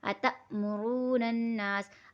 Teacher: تو واؤ ساکن سے پہلے پیش تو واؤ مدہ، اور را کے اوپر پیش ہے تو را موٹی ہی پڑھی جائے گی۔ نون کو نون سے ملا کے پڑھیں گے، الف اور لام یہاں پر سائلنٹ ہے